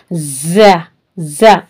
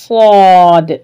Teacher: ये रूफे सफीर कहलाते हैं यानी सीटी वाली आवाज आएगी